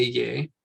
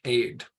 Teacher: So we're going to start off with a sound, a, and the double dot followed by a yod doesn't have an extra ya sound, so it's not a ye, but a d with that dalet, aid.